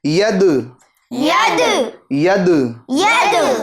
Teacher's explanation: دال میں قلقلہ کریں گے آواز کو لوٹائیں گے